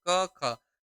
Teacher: देखो क और ख का उच्चारण करें तो इसमें कंपन नहीं हो रहा है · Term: अघोष